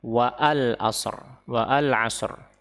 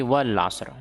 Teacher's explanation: Hamzah wasal ini gugur ketika seseorang membaca secara sambung. Maksudnya disambung dengan ayat atau potongan kata sebelumnya.